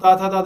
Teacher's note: दांत और जीभ के स्पर्श से जो बोली जाती है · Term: दंत ध्वनियां